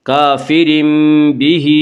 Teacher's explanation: کافر بہ، ہا کے نیچے کھڑی زیر ہے، کھڑی زیر قائم مقام ہے یا مدہ کے، اس لیے کھڑی زیر کو 1 الف کے برابر کھینچ کر پڑھیں گے · اس کا قاعدہ ہے کہ نون ساکن یا تنوین کے بعد اگر بائے تو قلب ہوگا، یعنی نون ساکن اور تنوین کو میم سے بدل کر غنہ کے ساتھ پڑھیں گے، اور یہاں تنوین کے بعد با ہے اس لیے یہاں پہ قلب ہوگا۔